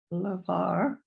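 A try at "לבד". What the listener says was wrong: Levad. That's a Dalit. Levad.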